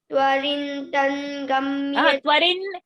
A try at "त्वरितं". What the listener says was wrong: Twarin. Twarin is not there, my dear child. Rin is not there. Twaritang.